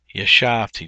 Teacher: The accent is on the middle syllable.